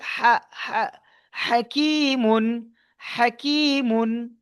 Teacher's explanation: হা এই হাটি আপনার হালাক, অর্থাৎ গলার ভিতর দিয়ে আওয়াজ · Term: হুরুফে হালকি